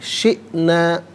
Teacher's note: شئنا میں حمزہ ساکن ہے، اسے جھٹکے کے ساتھ پڑھا جائے گا